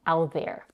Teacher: she's holding the tongue and she's pushing it a little bit forward for the TH sound